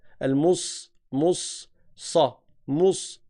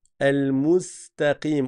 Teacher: élargis les lèvres comme si tu souriais, comme si tu viens sourire, pour t'habituer à ne pas faire un sad qui est emphatique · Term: sin